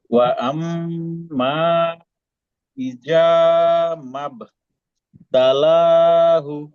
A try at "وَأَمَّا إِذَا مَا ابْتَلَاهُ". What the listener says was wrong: ভাই ইজাটা একটু নরম করতে হবে, ইজা একটু আর একটু নরম করতে হবে। হ্যাঁ হ্যাঁ হ্যাঁ মদের হবে।